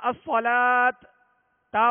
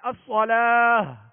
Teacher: آخر میں ہا کی آواز نکالیں گے، ہائے ساکنہ کی آواز نکالیں گے ، یہ گول تا کے لیے۔ اور اگر لمبی تا ہے،